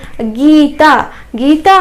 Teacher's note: यहाँ पे गी का उच्चारण करते वक्त हमें थोड़ा ज़्यादा समय लेकर बोलना चाहिए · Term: दीर्घ ई